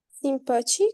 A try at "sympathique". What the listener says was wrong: Isso, só que não é simpatica. O YM se prononce un.